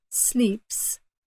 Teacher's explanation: after a P when you have an S it's almost voiceless